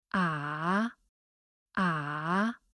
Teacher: The third tone is at the lowest pitch with a very slight rising towards the end of the tone, ah, ah. It's similar to the English low pitch sound, The Chinese word ma, which means horse, has the third low tone, ma.